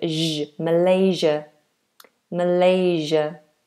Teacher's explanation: this is a zh, a voiced fricative sound.